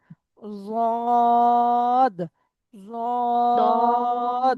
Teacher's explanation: জিভের কিনারা জদ, উপরের মাড়ির দাঁতের গোড়ার সাথে লাগান।